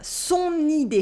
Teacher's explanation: Here we have une liaison between son and idée. This is what makes the N heard. Son idée. At the end of idée, we have an E sound.